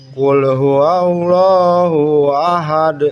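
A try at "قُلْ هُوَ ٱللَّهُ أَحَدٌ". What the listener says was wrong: U-nya tidak panjang.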